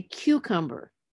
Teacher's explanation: the stress on the third syllable from the end